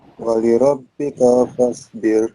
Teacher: Bir pendek, tipis Pak. Tipis. Walirabbika fasbir.